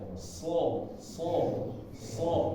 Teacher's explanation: ujung lidah ini menempel di bawah seperti biasa tetapi bagian tengah dan bagian belakang ini seperti naik ya